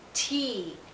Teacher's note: Here we have the E sound, and it's not followed by any consonant sound, so it's nice and long.